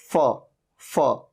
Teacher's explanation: जिसमें ऊपर के दांत नीचे के लिप पे टच हो रहे थे